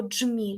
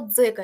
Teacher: якщо ми маємо злиту вимову Тобто ми маємо Дж ми маємо ДЗ тоді це Ні не д ні не з вони єдині вони разом